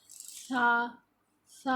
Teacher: زبان کی نوک جب اوپر والے دانت کے سامنے کے جو دانت ہوتے ہیں ان کے سرے سے لگتی ہے تو سا، سا ادا ہوتا ہے